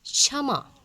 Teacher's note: अक्ष कंठ प्लस मूर्धा से होता है।